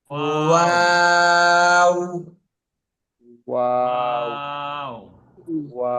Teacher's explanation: দুই ঠোঁট গোল করে সামান্য খোলা রেখে উচ্চারিত হবে